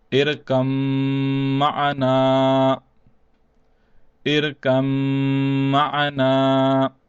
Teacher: the ba will not be pronounced, and the kaf will be joined over with the mim only. And since the mim is mushaddad, therefore the mim has to be prolonged as well.